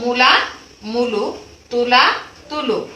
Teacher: আদি স্বর অনুযায়ী অন্তঃস্বর পরিবর্তিত হলে প্রগত স্বরসঙ্গতি হয়।